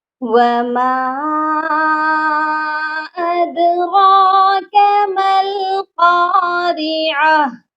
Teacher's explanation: وما پر چھوٹی مد ہے، اس کو ہم تھوڑا سا کھینچ کر پڑھیں گے · دال جو ہے حروف قلقلہ ہے اور یہاں پر ساکن ہوئی ہے، اسی لیے یہاں پر قلقلہ بھی کرنا ہے